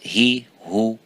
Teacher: The same level, the same time you give for the ha with the kasra is the same as you give it for the dhamma.